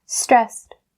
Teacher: The ed part here is supposed to be pronounced as the T sound because it's voiceless. It's a voiceless consonant.